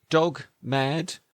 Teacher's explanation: The tongue touches the ridge behind the teeth. Then releases.